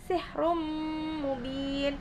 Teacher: ada tanwin bertemu dengan mim dibaca idgham yaitu idgham bi gunnah memasukkan dengan dengung. Mubin di situ ialah mad arid disukun sebab mad tabi'i bertemu dengan huruf yang disukun karena waqaf.